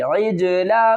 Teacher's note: غنہ کریں گے، میم کے اوپر مشدد ہے، ثُمَّ اتَّخَذْتُمُ الْعِجْلَ، عین کو جیم سے ملائیں گے، قلقلہ کریں گے